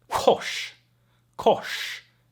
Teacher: No R sound, just a weird sh sound.